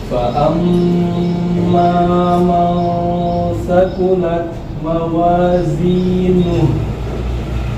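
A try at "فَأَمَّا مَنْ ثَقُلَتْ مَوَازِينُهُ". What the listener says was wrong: Oke, bagus.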